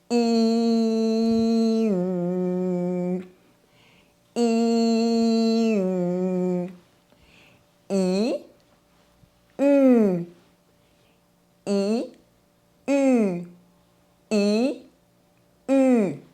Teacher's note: we’ll slowly round our lips without moving our tongue. We are going from a smile to a kiss position. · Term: [y] sound